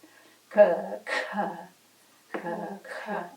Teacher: this is just extra emphasis, extra air is pushed out as you do the ka.